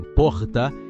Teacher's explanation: o r caipira que enrola como em porta